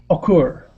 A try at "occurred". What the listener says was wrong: Occurred, and try and end that with a D sound. Occurred.